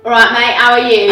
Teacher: It's really glottal stops, glottal stop. drop the T's, open mouthed vowels.